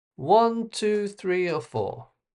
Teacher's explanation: Up, along, along, and then down.